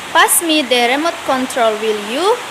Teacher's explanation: dalam kalimat ini imperatif dapat diikuti rising tag dengan modal will, can, dan lainnya